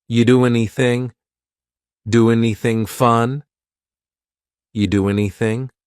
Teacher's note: We sometimes drop the A, and we're going to push those two together because there's two N sounds side by side.